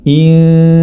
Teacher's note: Jadi ketika samar tersebut, lisan kita sudah bersiap dalam pengucapan huruf berikutnya, atau di sini huruf ta, ya. Huruf ta di mana makhrajnya terdapat di ujung lidah bertemu dengan gusi atas, ya. Sudah bersiap-siap lidah kita, yakni ujung lidah bertemu dengan gusi atas. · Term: ikhfa